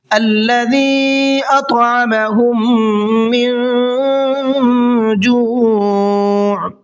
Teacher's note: अल्लज़ी छोटा मद है, 1 से 3 अलिफ के बराबर खींच करके पढ़ना है · میم ساکن کے بعد میں میم ہے، غنہ کر کے پڑھیں گے، تھوڑا سا ناک میں آواز